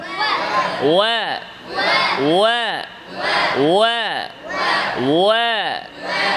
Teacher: ওয়াও ইস্তিফাল, সৌত নিচের দিকে থাকবে, উপরে না। ওয়া না, ওয়া না, ওয়া বলেন, ওয়া ওয়া ওয়া ওয়া।